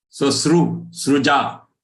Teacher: in most part of the South, Maharashtra downwards, it is ru.